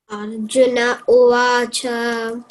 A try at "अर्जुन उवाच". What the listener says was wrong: ये see here Arjuna, you have to give a gap and say uvacha. People say Arjuna uvacha. No, it is wrong. Arjuna uvacha.